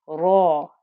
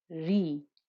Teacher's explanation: If you remember when we did a fatha, we said ra with fatha, raw, and you could this aw noise that goes with the thick heaviness, with the thickness at the back of the tongue. But when ra has a kasra, the back of the tongue doesn't become thick. It doesn't become a heavy noise. Ri. A bit like, the closest I can get to it if you're struggling is a bit like if you're going to say, I'm going to read this book.